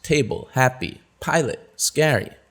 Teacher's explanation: where's the stress it's on the first syllable